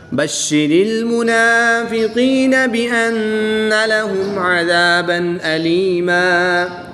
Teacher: دو زبر کی تنوین کے بعد حروف حلقی میں سے حمزہ ہے تو یہاں پر اظہار ہوگا، یعنی کہ تنوین میں غنہ نہیں کریں گے بلکہ تنوین کو خوب ظاہر کر کے پڑھیں گے